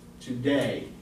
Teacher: Your voice goes up at the end of the word. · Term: iamb